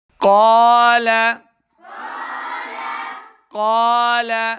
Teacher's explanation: دو نقطوں والا قاف ہمیشہ موٹا پڑھا جاتا ہے، حروف مستعلیہ سے ہے